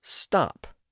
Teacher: she pronounced the word with an unrounded A vowel rather than the rounded O vowel